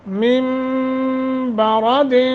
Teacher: نون ساکن کے بعد با ہے، لہذا میم سے بدل کر پڑھیں گے